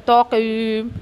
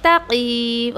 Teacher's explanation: तो तक़ीम ऐसा नहीं करना आपको, तक़ीम। ओके, ता हैवी नहीं करना है आपको, क़ाफ़ को हैवी पढ़ना है